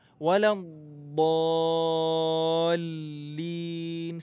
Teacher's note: Huruf dhad di sini ada tasydid. Jadi tahan dulu.